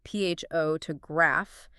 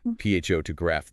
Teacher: Middle o just evaporates into a lazy uh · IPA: /ə/